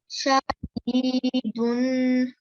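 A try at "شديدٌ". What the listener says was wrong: Very nice. Excellent. Well done.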